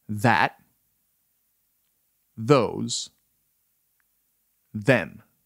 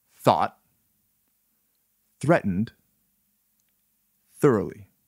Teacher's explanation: Note the two variations of the TH sound. Voiced TH. That. Those. Them. Voiceless TH.